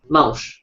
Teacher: Transforma-se em mãos. Se tira simplesmente a N e se nasaliza as vogais